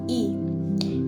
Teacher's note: vokal tinggi depan dengan menggerakkan bagian depan lidah ke langit-langit